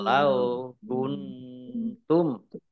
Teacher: Nun sukun bertemu dengan huruf ta, bacaan ikhfa dibaca samar-samar.